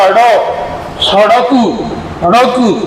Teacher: हमारी जीभ क्या करती है? उठकर पड़ती है, यानी कि दूर हटाने का एहसास होता है। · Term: उत्क्षिप्त व्यंजन